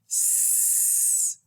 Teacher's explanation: No vocal fold vibration at all